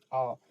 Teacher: आ का उच्चारण करके देखिए आपको पीछे से एकदम आवाज आएगी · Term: पश्च स्वर